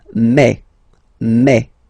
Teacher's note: Remember when you combine this a and then e vowels, you get the sound e. So really open e. Okay? And then you pronounce it me.